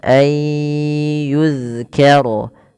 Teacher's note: cara membacanya memasukkan nunnya kepada huruf setelahnya dan huruf setelahnya menjadi tasydid atau dua huruf. Maka ayyu kemudian ditahan dengan ghunah sepanjang dua harakat.